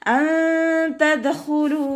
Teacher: നൂൻ സാക്കിനയ്ക്ക് ശേഷം ഇഖ്ഫാഇൻ്റെ ലെറ്റർ ആയിട്ടുള്ള താ വന്നിട്ടുണ്ട്. നൂൻ സാക്കിനയെ മറച്ചു വെച്ചിട്ട് മണിച്ചോതി കൊടുക്കുക കേട്ടോ.